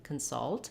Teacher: We do have a little short unstressed schwa, consult, but you can hear how much longer and clearer the vowel is in the salt part, and the part is has a very reduced vowel, consult. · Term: stressed schwa sound